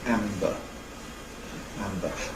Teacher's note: We run the two together; we use the same lip gesture for the two segments · from the [m] configuration to the [b] configuration, you take the shortest possible route, which means not moving lips but moving the soft palate. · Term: coarticulation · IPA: [ˈæmbə]